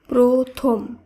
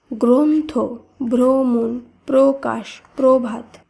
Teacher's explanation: শব্দের শুরুতে যদি অ ধ্বনি থাকে এবং তার সঙ্গে যদি র ফলা যুক্ত থাকে তাহলে অ এর উচ্চারণ ও হিসেবে উচ্চারিত হবে যেমন লক্ষ্য করুন এখানে প্রথম এই শব্দটিকে শব্দের শুরুতে রয়েছে অ